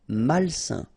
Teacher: A-I-N together, it's a nasal and it's un.